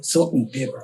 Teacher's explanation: in this case and sounds like n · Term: reduction